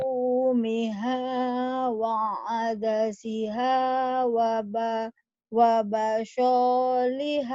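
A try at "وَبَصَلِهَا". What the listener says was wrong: Pendek. Wabasoliha. Wabasoliha. Ya lagi.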